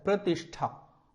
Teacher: ये जो प्रतिष्ठा में जो ये श है, इसको हम किस तरीके से बोलेंगे? हम इसको मूर्धन्य श बोलते हैं, मूर्धन्य। इसका उच्चारण हमें बहुत अच्छी प्रैक्टिस करने के बाद में मिलेगा।